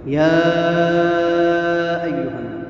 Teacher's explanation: یہ مد جائز منفصل ہے، 3 یا 4 حرکات کی مقدار اس کو لمبا کر کے پڑھیں گے